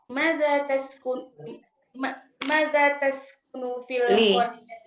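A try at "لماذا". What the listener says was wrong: Limaza, Bu, bukan maza. Ada li-nya. Ada li-nya. Limaza. Kedengarannya maza aja.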